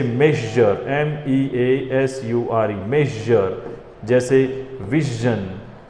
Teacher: तो र का हमेशा ध्यान रखना, र उच्चारण तब होता है जब र के बाद में स्वर ध्वनि आती है। और ये है शज, इसमें श और ज दोनों मिक्स होंगे